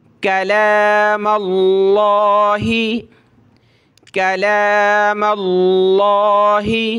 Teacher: لفظ اللہ سے پہلے زبر ہو تو موٹا کریں گے، یہاں میم پہ زبر ہے تو موٹا کریں گے، اور یہ لام پہ کھڑا زبر ہے، ایک الف کی مقدار ہم نے اس کو اوپر کھینچنا ہے، کاف کو پتلا کریں گے، چھوٹی کاف ہے۔